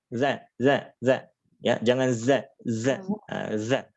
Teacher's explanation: ini di ujung lidah nempel di ujung gigi seri bagian atas